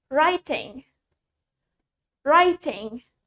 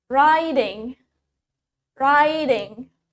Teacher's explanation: In British, we say the T clearly. And in American, we say the T as D.